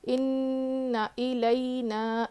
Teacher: اننا میں غنہ ہے جو ہے غنہ کر کے پڑھیں گے, نون پر تشدید ہے تو غنہ کریں گے